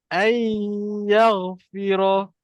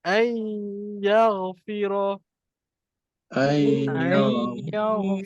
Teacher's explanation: Jadi masuk, bila kita masukkan, maknanya kita hilangkanlah bunyi nun ni. Sebab dia dah masuk dalam huruf ya. Lepas tu kita dengungkan huruf ya. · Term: masuk dengung